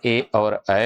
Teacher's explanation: कंठ तालू से ए और ऐ हो जाएगा